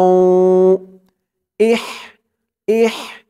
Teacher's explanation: এই হার উচ্চারণটা গলার ভিতর থেকে চিকুন হয়ে বের হবে